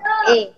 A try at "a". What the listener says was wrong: হ্যাঁ, এ যেটাকে বলছেন ওটাকে আ বলেন, আ।